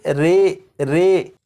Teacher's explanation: یہاں پر لکھا ہے امالہ، زبر کو زیر کی طرف اور الف کو یا کی طرف مائل کر کے پڑھنے کو امالہ کہتے ہیں۔ امالہ کی راء کو اردو کے لفظ قطرے کی راء کی طرح پڑھیں گے، یعنی ری نہیں بلکہ رے پڑھیں گے